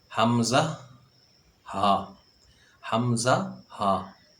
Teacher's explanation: حمزہ اور ہا حلق کے آخر سے ادا ہوتے ہیں جو سینے کی طرف ہے، یعنی کہ جہاں سے حلق جو شروع ہوتا ہے حمزہ اور ہا وہاں سے ادا ہوتے ہیں۔